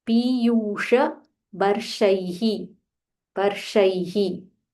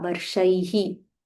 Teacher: Sh, Murdanya sh, and there is a visarga